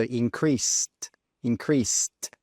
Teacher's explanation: Note with the pronunciation, we don't say increased. No, when we're using increased in the past, we need to pronounce that s e d as an s t. So increased increased with that t sound at the end.